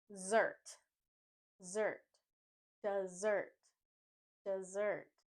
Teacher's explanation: the S sound we drop that and add a z sound the stress is on the second syllable